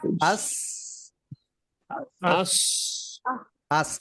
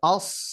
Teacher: সিনটা পাতলা উচ্চারণ আর সদটা হচ্ছে মোটা উচ্চারণ, ভারী উচ্চারণ হবে আস আস আস, এটা আস নরমাল আস, আস আস আর সদ হবে অস।